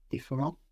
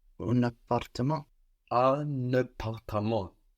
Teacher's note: So we have a liaison here. The N of un that we don't hear in un peu, it sticks to the A of appartement.